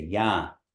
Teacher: You're not saying yan like the N, it's just there to mark that the A is nasalized.